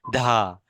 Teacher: उस लेटर के बाद में ह जैसे होने चाहिए लेकिन ह पूरा नहीं होता है जैसे ह की हवा अपने मुंह से बाहर निकल रही है